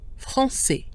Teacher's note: The final consonant, S, is silent, so AI has the closed E sound